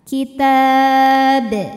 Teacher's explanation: dibaca dipantulkan dengan pantulan yang besar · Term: Qalqalah